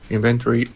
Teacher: I would stress inventory, the stress on the in, not on the ven.